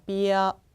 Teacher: 모음에서 아가 마지막에 올 때 아베 e 음 우가 오게 되면 아 소리가 어 소리로 바뀌게 됩니다 그래서 이 아가 아니라 이어가 됩니다